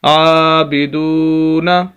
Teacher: عابدو، نون زبر نہ، عابدون، عین کو بھی لمبا کرنا ہے کھڑی زبر کی وجہ سے، دال کو لمبا کرنا ہے واو مدہ کی وجہ سے